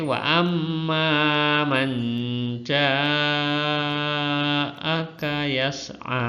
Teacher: kalau membaca mat wajib mutasil, namanya saja wajib, jadi ya panjang, 6 ketukan atau 3 alif, ya.